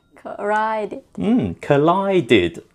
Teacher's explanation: Finished with a d sound already, therefore ed sounds like did.